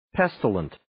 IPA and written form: 'pestələnt (Pestilent)